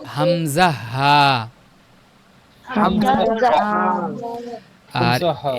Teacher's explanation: হলকের শুরু হইতে উচ্চারিত হয় হামজা হা।